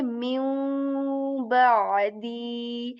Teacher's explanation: We kind of just ignore the sound of noon here. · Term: noon sakin